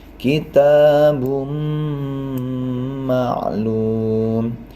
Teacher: harus dimasukkan di depannya dua ketukan dengan dengung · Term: idgham bighunna